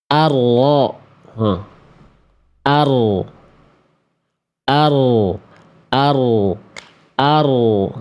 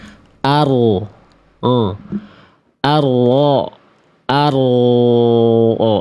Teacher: huruf ro itu dilafalkan keluar dari ujung lidah, tapi bagian punggung lidahnya. menyentuh bagian langit-langit atas tuh berarti langit-langit depan.